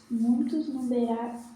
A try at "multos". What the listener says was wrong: È multos, né? Com L, multos. Muitos textos tem muitos con I, ma è L, multos.